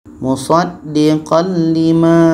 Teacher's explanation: tanwin masuk ke lam dan tidak boleh ada dengung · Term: idgham bila gunnah